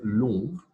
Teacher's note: Long with the rounded nasal vowel.